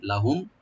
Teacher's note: লাহুম লামটাকে ওপেন রাখবেন, আর মিম সাকিন এখানে জাহার হবে , জাহার সফবি, লাহুম, মানে মিমে গুণা হবে না, কিলা লাহুম,